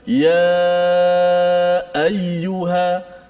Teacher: selepas kita panjang ya, nak ambil ayyuha tu kan suara kita tertahan dulu pada makhraj. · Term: suara tertahan